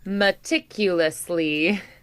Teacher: so it's like the second syllable and then the last syllable are accented